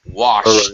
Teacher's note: the sh sound is sh there's no voice